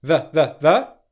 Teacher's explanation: /ðiː/ becomes unstressed again before a consonant